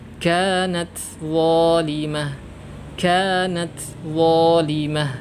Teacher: Harusnya huruf ta di sini memiliki hams desis.